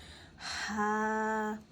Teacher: ہا کو ہم ٹھنڈا پڑھیں گے، اور ہا حرف حلقی میں سے بھی آتا ہے، اسے ہم حلق کے درمیانی حصے سے ادا کریں گے۔